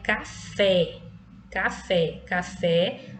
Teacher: a sílaba com mais intensidade né mas força é a última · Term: oxítona